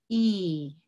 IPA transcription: i: